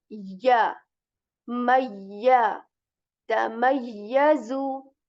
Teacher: Ya letter is articulated when the middle portion of your tongue is raised towards the palate